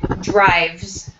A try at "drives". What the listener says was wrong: Try drives. No T sound at the end.